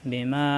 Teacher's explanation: বিমা দুই ঠোঁট একত্র হবে কিন্তু হালকা কোন চাপ সৃষ্টি হবে না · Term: ইকফা মিম সাকিনের